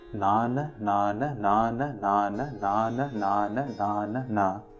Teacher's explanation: it is a repeating pattern of one short syllable which comes after a long syllable